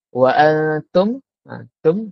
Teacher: huruf mim sukun daripada makhrajnya serta tanpa dengung. Sebab tu dipanggil izhar. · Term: izhar syafawi